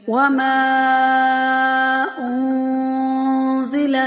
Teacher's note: اس میں مد منفصل ہو رہی ہے تو 5 سے 6 الف کے برابر کھینچ کر پڑھیں گے۔ اور نون ساکن کے فوراً بعد حروف اخفا میں سے قاف آ گیا ہے، تو یہاں پہ اخفا کریں گے اور با پر قلقلہ ہوگا۔